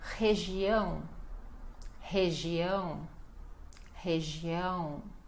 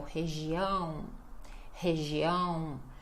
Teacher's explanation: Aqui nós temos o R inicial, re, depois o G e o ão nasal.